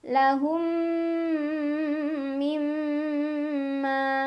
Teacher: Cara bacanya mim yang sukun dileburkan atau dimasukkan ke mim kedua sambil dengung. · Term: idgham mimi